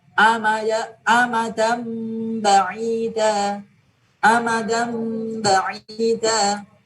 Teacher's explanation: Tanwin bertemu dengan ba, maka tanwinnya diganti mim. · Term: iklab